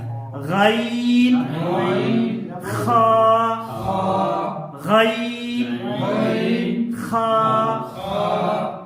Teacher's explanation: ادنا حلق سے جو منہ کی طرف جو حلق کا حصہ ہے وہاں سے ہم اور آپ غین اور خا کو ادا کریں گے